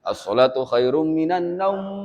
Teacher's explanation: naum yang panjang u-nya bukan am-nya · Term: madlin